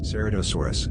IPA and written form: ˌsɛrətoʊˈsɔːrəs (Ceratosaurus)